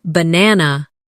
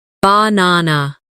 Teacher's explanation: in the word banana, the stress is on the second syllable, banana. If you put the stress in the wrong place, it can sound strange, even if your pronunciation of the letters is correct.